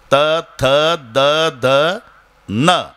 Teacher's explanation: प्रत्येक वेळेला तुमची जीभ धक्का दाताला मारेल.